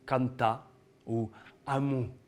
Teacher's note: le R à la fin du mot on oublie